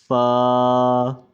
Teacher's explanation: یہ اوپر کے 2 دانتوں کو نیچے کے ہونٹ سے ہلکا سا فاصلہ چھوڑ کر ادا ہوتا ہے